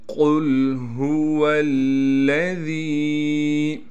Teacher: قل هو الذی، قاف کو موٹا کر کے پڑھنا ہے، پھر قاف کو لام سے ملائیں گے، ہا کو صاف کر کے گلے سے نکالنا ہے